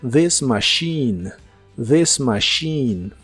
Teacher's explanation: Y usaremos las palabras this machine, que significan esta máquina. La TH de this se pronuncia como una D vibrante y la CH de machine se pronuncia como si fuera una SH. Y la I de casi al final es la I larga o doble.